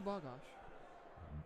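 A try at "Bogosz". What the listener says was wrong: I think she would have said that was wrong. Because you're saying more like gosh. Bogosh.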